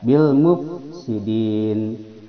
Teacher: qamariah lamnya terbaca jelas